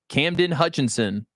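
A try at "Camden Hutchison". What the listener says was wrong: Or Hutchison. You have added an N in about 10 different names where there is no N.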